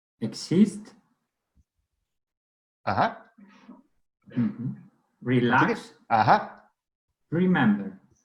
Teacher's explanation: what about verbs with more than one syllable? Well, in this case, it's the second syllable which is emphasized, which is stressed.